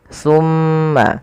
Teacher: suara mimnya ditahan sepanjang dua harakat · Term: gunah